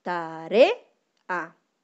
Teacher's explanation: tenemos la sílaba tónica que es re, porque es la que suena más fuerte. Y luego tenemos las sílabas átonas, que serían ta y a, porque suenan más bajito, ¿ya?